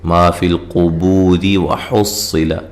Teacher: جب ملا کے پڑھیں گے تو را کو باریک پڑھیں گے، را کے نیچے زیر ہے. اچھا، صاد کو موٹا پڑھنا ہے.